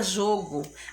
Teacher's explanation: A palavrinha jogo, a sílaba mais forte, ou seja, a sílaba tônica é jó.